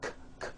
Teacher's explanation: Break ends with an unvoiced K sound. K, k. There's no voicing on that K.